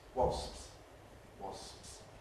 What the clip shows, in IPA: wɒsps